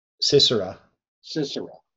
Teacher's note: they put the accent on the first and the last syllable.